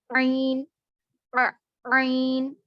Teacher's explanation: आइन, आइन जुबान का हलक का दरमियानी हिस्सा यानी वसतुल हलक से अदा होगा।